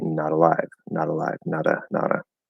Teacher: the most common thing without any special emphasis is to flap the D, turn the T into a flap D